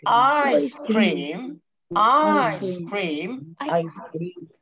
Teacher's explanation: تتأنى شويه بس بعد الاي عشان توضح ان ده فاعل وفعل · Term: جانشر